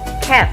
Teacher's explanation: the tongue is positioned relatively low in the mouth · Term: near open